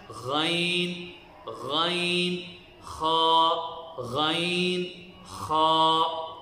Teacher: ادنا حل کہتے ہیں کہ گلے کا وہ حصہ جو منہ کی طرف ہو، اس سے 2 حرف نکلتے ہیں، غین اور خا